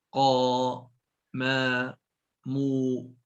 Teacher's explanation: mad tabi'i dibacanya dengan dua harokat saja